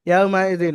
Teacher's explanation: ওয়াউলিন নরম আওয়াজে তাড়াতাড়ি পড়তে হবে, টান দেওয়া নিষেধ।